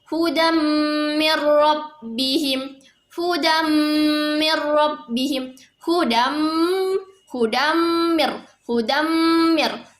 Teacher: Nah, di situ ada penekanannya waktu pembacaan huruf mim, karena di situ ada idgham bil gunnah yang dibaca sepanjang 2 harokat. Jadi saat kita ingin memasukkan huruf mim, kita harus menekan dulu terlebih dahulu sepanjang 2 harokat.